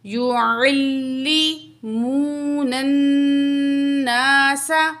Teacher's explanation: یعلمون الناس، یا پیش یو، عین کو لام تشدید سے ملائیں گے، عین زبر لام عل، لام زیر لی، یعلمون الناس، واو مد ہے، دو الف کے برابر کھینچ کے پڑھیں گے، نون کو نون تشدید سے ملائیں گے، درمیان میں الف لام ہے، نہیں پڑھا جائے گا، تو نون میں یہاں پہ ہم غنہ کریں گے